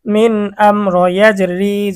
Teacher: তাহলে মিম সাকিনের পরে যদি বা এবং মিম এই দুই হরফ না থাকে তাহলে ইজহার স্পষ্ট। এখানে মিম সাকিনের পরে বা ও নাই মিমও নাই, র আসছে, এই জন্য গুন্না ছাড়া স্পষ্ট পড়তে হবে।